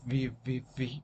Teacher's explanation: what we have is the upper teeth and the lower lip. In this case, we can produce sounds like v, v, v, v, right?